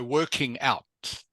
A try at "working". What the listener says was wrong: Make sure, because at first I thought you said walking. Just be careful with the pronunciation, okay? There's a difference between working and walking. Walking and working. They sound very similar, but you've got to be careful with the pronunciation so that the person listening understands exactly what you say.